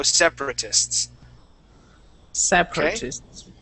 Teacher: the first a after the p we skip right over that we say sep separatists try that separatist there you go separatists